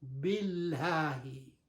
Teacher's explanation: the lam in the harf jalala become lighter